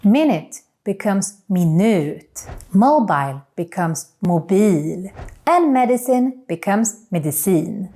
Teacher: in most of these words we change the stress to the last syllable